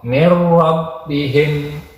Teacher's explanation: Di nun matinya hilang, suaranya itu langsung ke huruf ro. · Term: idgham bila gunah